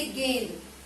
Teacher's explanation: गेंद में भी मुंह से और नाक से दोनों से स्वर निकल रहा है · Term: अनुनासिक स्वर